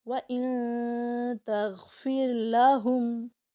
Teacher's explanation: ہم نے 3 سیکنڈ کے لیے ناک کے اندر آواز کو سٹے کروانا ہے، چھپانا ہے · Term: اخفا